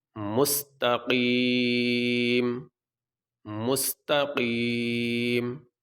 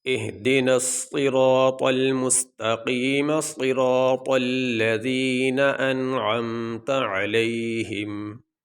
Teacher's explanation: اہدنا الصراط المستقیم، یہ ہم نے زبر نہیں پڑھی، میم کو پڑھا جائے گا، زبر کو نہیں پڑھا جائے گا، میم ظاہر ہو گیا آخر میں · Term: میم کو ساکن